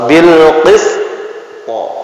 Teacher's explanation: Karena dua-duanya sifat isti'la. Qaf sama to itu mantulnya condong miring ke o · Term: pantulan